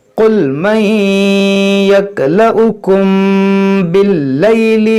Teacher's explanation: यहाँ देखें वाव के ऊपर एक हमज़ा है, तो इस वाव को नहीं इस हमज़ा को पढ़ेंगे यक्लउकुम। यहाँ मीम साकिन के बाद बा है, यहाँ पर इख्फाए शफवी का कायदा लगेगा, यानी यहाँ पर भी गुन्ना करेंगे